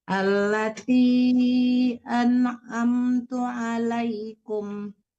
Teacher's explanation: Jangan ang ya, tapi an harus jelas nun matinya.